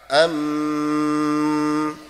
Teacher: ulama memang berbeda pendapat cara mengucapkan ikhfa apa namanya iqlab Maaf ada yang membaca idbaq idbaq itu bibirnya rapat